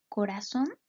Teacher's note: la palabra corazón sabemos que suena más fuerte en son porque está tildada por lo tanto esa sílaba que suena más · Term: sílaba tónica